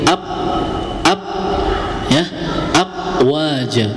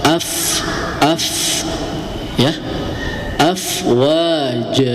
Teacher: Yang benar hamas ya, jadi ada hembusan.